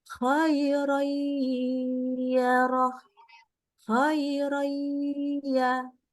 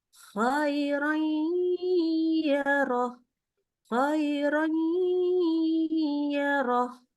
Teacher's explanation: Ingat, dengungnya saja yang dengan gunnah. Baca ya-nya kembali langsung di mulut. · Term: idgham bi gunnah